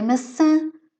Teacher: Não, nem sempre, porque o M e o N também nos permitem fazer isso, mas quando, por exemplo, em maçã, eu se retirar o til, tenho que ler massa, não é? Então, o til está lá para nasalar, para criar aquele an, que é, nós consideramos que é um som nasal. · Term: vogal nasal